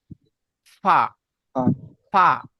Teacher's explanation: ফা বলা হচ্ছে নিচের ঠোঁটের ভিজে অংশ এবং সামনের উপরের দুই দাঁতের আগার সাথে মিলিয়ে, নিচের ঠোঁটের ভিজে অংশ এবং সামনের উপরের দুই দাঁতের আগার সাথে লাগিয়ে উচ্চারিত হয় ফা